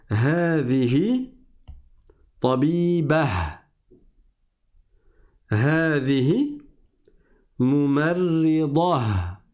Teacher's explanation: Le ta marbota, si je m'arrête dessus dans la phrase, il se transforme en ha.